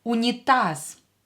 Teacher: This Z will be pronounced as S at the end because it's at the end of the word.